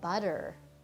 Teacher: those two T's become a d sound and the switch from those t's to adi our cut or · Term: the flap